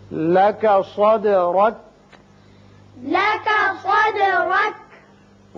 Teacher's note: صاد پر پڑھتے ہیں اور دال جب ساکن آ جائے تو اس کی صفت قلقلہ ادا کی جاتی ہے. را کے اوپر زبر ہے، اس کو پر پڑھیں گے.